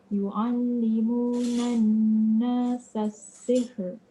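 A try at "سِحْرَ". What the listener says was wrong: Boleh? Betul? Cuma dia punya ra tu tak takril jadi sihr kan? Dia kena gerak, kena lantun, dia kena bergetar.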